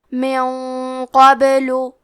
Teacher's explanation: قاف حروف التفخیم میں سے ہے، تو ہم یہ غنہ کو بھاری آواز میں ادا کریں گے